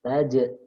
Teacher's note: Nah, taj ini ada sifat qalqalah jim. Karena jim ini bukan huruf isti'la, maka qalqalahnya juga tarqiq ya, tipis. Taj ya. Nah, taj'alu lu-nya ini matabi'i lillah.